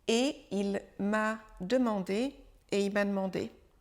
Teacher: On effleure tout juste le mot « et » en début de phrase. Il disparaît presque et il est presque avalé par le « i » et il m'a demandé.